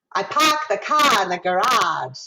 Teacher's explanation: if you're in boston it's a very bright ah